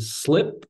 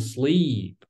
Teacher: So in the first the example, there is longness and shortness of the sound. In the slip, there is like very short contracted form sound. And in the sleep, like there is a slide and the longness of this sound.